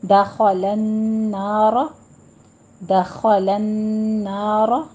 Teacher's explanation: دخلن لام بھی باریک رہے گا، لام کو موٹا نہیں کرنا. دخلن نہیں کہنا ہے.